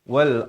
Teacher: Ra itu tanda mati, sebelumnya datang hamzah berbaris fathah dibaca tebal.